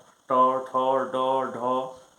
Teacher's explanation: जब उच्चारण करते हैं तो जीभ के आगे का भाग जो है वह ऊपर सट जाता है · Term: मूर्धा